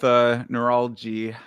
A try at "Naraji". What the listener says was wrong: Naraji. There's no L there. No L.